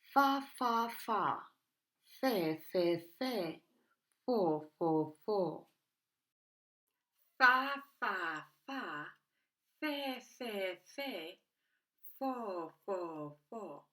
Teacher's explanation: teeth on the back of our bottom lip inside our mouth release cold continuous air you only need your bottom lip there is no use of vocal cords voiceless · placing our top frontal teeth on the back of our bottom lip inside our mouth release cold continuous air you only need your bottom lip there is no use of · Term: letter F